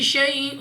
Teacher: یا ساکن سے پہلے زبر یا لین، بغیر کھینچے بغیر جھٹکا دیے پڑھیں گے یعنی جلدی سے